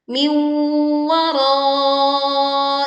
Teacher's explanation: leburkan nun sukun bertemu wawu sehingga dengung dibaca tidak tergesa-gesa